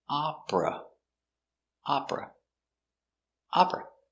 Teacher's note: the first sound is open a a and the final sound is closed uh